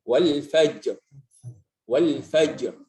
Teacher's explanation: Ada qalqalahnya tapi enggak sekuat yang akhir kata ya. Kemudian tidak muncul harakat setelah mengucapkan qalqalahnya.